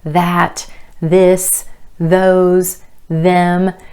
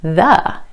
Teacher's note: for the voiced th your vocal cords are involved and vibrating as you make the sound